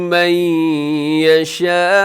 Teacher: نون ساکن کے بعد یا ہے، یہاں پہ ادغام ہو رہا ہے لیکن غنے کے ساتھ ، آواز کو یہاں بھی اپنے ناک میں لے کے جانا